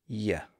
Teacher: We make that sound by slightly raising the tongue toward the palate. And in fact, we put the tongue in a position that's very similar to the position we use to make the E sound. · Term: Y sound